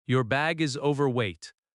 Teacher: The stress falls on over-overweight.